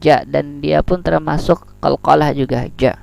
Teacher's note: Ja. Nah, dan ja ini termasuk syiddah, dia tertahan